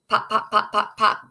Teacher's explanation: it's a bilabial sound and it's really easy to see